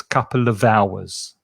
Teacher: And the v from the v sound from of connects with the vowel sound, because remember the H is silent on hours. So it's couple of hours.